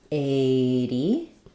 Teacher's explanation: it's a straightforward flap T because it's between 2 vowels and it's an unstressed syllable. So it sounds like 80.